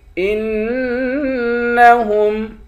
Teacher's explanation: حمزے کو نون کے ساتھ ملا کر نون پر غنہ کریں گے